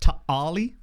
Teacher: the Q's in Maltese teams are pronounced like a glottal stop